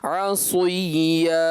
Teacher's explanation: ایسا لگا مشابہ ضمہ کے ہو گیا، یعنی پیش کا ہو گیا، جیسے آپ کے ہونٹ گول ہو گئے